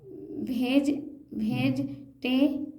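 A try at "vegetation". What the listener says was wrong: अभी जब टे पढ़ी रहे तो ये क्यों पढ़े, अलग से ये नहीं पढ़ना है। हाँ, वेजिटेशन, वेजिटेशन।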